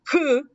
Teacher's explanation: At the beginning there's no air because it's blocked, and then you are gonna feel the air.